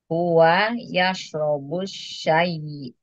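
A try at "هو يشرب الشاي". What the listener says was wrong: Dia panjangin, panjangin dulu. Yashrabu syai.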